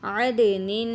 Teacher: نون دو زیر نن اور نون تنوین آ گئی اور یہاں پہ غنہ کریں گے